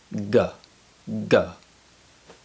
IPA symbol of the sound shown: g